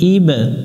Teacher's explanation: তিন আলিফ টান দিব আলা ই মিলবে বা এর সাথে ইবা বা এর উপর যদি সুকুন থাকে তাহলে প্রতিধ্বনি সৃষ্টি করতে হয় অর্থাৎ কলকলা করতে হবে